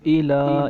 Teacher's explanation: ادھر ہم تین یا چار الف کی انتظار لمبا کریں گے کیونکہ اس پر مد ہے۔ یہ مد منفصل ہے کیونکہ حمزہ دوسرے کلمے میں ہے۔